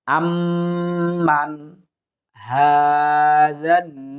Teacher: আম্মান হাযাল্লাযী, এখানে মানে গুন্না আমরা করব না, যেহেতু নুন সাকিনের বামে ইজহারে হরফ হা এসেছে, সুতরাং আমরা স্পষ্ট করে পড়ার চেষ্টা করব। শুধু আম এখানে গুন্না করব, মান এখানে এসে স্পষ্ট করে পড়ার চেষ্টা করব।